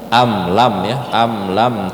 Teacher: ya ikhfa juga am lam itu tidak usah dengung karena mim mim sukun bertemu huruf selain mim dan ba maka dia tidak dibaca dengung dia jatuhnya jadi izhar syafawi tidak usah dengung am lam ya